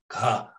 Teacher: So you have ka, ka in high register tone, and you do have low register tone, but you have ka with this breathy voice, and then you still have voicing.